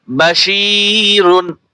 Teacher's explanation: শিন ইয়াজের শি, জেরের বাম পাশে জজমালা ইয়া, এখানে টান হবে